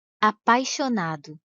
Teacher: o som do I quase não aparece se ele tivesse um som mais forte e mais demorado a · Perceberam que o som do i quase não aparece? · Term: semivogal